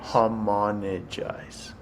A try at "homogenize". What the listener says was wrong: G before the N. Homogenize.